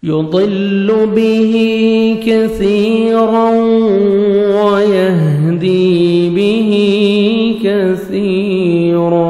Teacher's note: موٹا کرنا ہے، ٹھیک ہے، را کو مد و زبر ہے، را کو موٹا بھی کریں گے اور ادغام کریں گے غنہ کے ساتھ